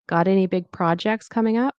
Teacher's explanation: And notice this the the T here it turns into a D sound. It's between two vowels.